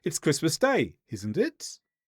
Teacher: By turning it into a question through the intonation, we're showing we're not really sure